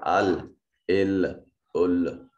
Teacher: زبان کی اطراف جب مسوڑوں کی طرف یہ ثنایا، رباعی، انیاب، دواحک ان کے ساتھ ملے تو یہ لام ادا ہوتا ہے